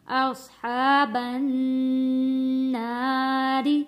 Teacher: نون کے اوپر تشدید ہے، غنہ ادا کیا ہے